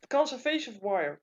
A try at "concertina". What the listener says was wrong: It's not conservation. Concertina. It's like a concert with an ina on the end. Yeah. Concert.